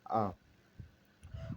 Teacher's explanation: उसके बाद आता है विवृत स्वर, हमारा तीसरा भाग इसमें किसमें, मुखाकृति के आधार पर इसमें तीसरा भाग आ जाता है विवृत स्वर। विवृत स्वर, इसमें मुख पूर्णतः खुला रहता है, विपरीत का अर्थ भी खुला हुआ जाता है और इसमें एक ही स्वर को शामिल किया जाता है, वो आ जाता है आ।